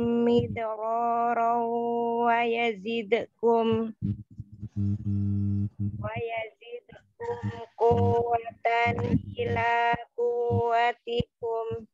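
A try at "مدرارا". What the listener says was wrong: Ya, kolkolah midalnya jangan dihilangkan. Kan wau tasdidnya tapi tidak ditahan. Kuwatan.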